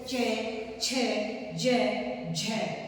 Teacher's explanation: क्योंकि इनको हम संघर्ष करके बोलते हैं, जैसे च, छ, ज, झ। तो ये स्पर्श होकर संघर्ष करते हुए वायु विवर के साथ मुख से बाहर निकलते हैं, इसलिए इन्हें स्पर्श संघर्षी कहा गया है।